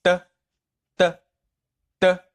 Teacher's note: the initial d is equal to the T in the word stop, but it is not voiced at all